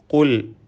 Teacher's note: കാഫ് തഫ്ഹീം നൽകി പെരുപ്പിച്ച് സ്വരഭാരത്തോടെ ഉച്ചരിക്കണം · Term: തഫ്ഖീം